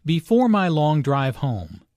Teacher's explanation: Notice the emphasis and intonation on home.